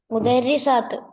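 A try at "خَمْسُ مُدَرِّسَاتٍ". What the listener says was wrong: അയ്വ മുദരിസാത്ത് എന്നല്ല, വ്യക്തമായി ഹർക്കത്ത് വ്യക്തമാക്കി വാക്യ ഹംസു. ലിസാൻ പഠിക്കുമ്പോൾ നമ്മൾ തുടക്കം അവസാനത്തെ ഹർക്കത്ത് വ്യക്തമാക്കി പറയണം.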